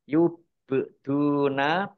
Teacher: fathah Alif Mad thii lam fathah Alif juga Mad thii yubuna ba sukun bacaan qolqolah dibaca memantul